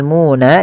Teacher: suara munya dipanjangkan dua harakat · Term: mad thabi'i